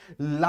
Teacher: ला के उच्चारण में सर अगल-बगल से वायु बाहर आती है इसलिए इसको पास्क कहते हैं क्योंकि मुंह के अगल-बगल के स्थान